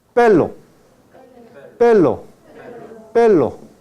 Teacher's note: El ápice de la lengua toca la región alveolar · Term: lateral ápico alveolar